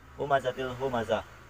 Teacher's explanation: tanwin bertemu dengan salah satu idgham bilagunnah yaitu la sehingga dibacanya tidak berdengung